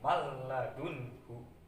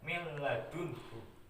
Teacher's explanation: Jadi ketika nun mati atau tanwin bertemu dengan huruf lam atau ro itu cara membacanya itu memasukkan huruf lam tersebut ke huruf nun tapi tanpa disertai dengung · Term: idgham bila hunah